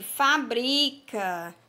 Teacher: Na palavra aqui, fabrica, qual é a sílaba tônica? É o bri. Nós pronunciamos com mais tonicidade.